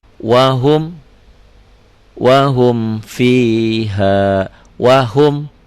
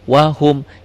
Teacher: Wahum, idhar itu jelas. Jelas apanya? Jelas bunyi mimnya. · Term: idhar syafawi